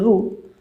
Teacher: ज्या स्वराचा उच्चार मूर्धेला लागून होतो त्याला कोणता स्वर म्हणतात, मूर्धन्य स्वर